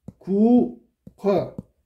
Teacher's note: 그럼 어떻게 된 거야? 앞말의 받침 기역하고 뒷말의 첫소리 히읗이 합쳐진 거야. 축약. 그래서 기역이 됐어. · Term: 자음 축약